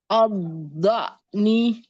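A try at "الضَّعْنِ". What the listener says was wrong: A-nya tipiskan dulu. Ad-da'ni. A. Jadi jangan terikut tebal. Ad-da'ni.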